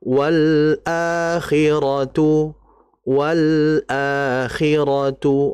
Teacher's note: Nah, di situ ada lam mati berjumpa dengan apa? Hamzah. Maka lamnya harus dibaca jelas. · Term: izhar